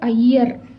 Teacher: ஆனால் 'ஐயர்' என்ற சொல்லில், நாம் 'ஐ' என்பதை அவ்வளவாக அழுத்தி உச்சரிப்பதில்லை. ஆகவே, இது அதன் மாத்திரைக் கால அளவிலிருந்து குறைவதால், இதை நாம் ' ஐகரக் குருக்கம்' என்று அழைக்கிறோம். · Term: ஐகாரக் குறுக்கம்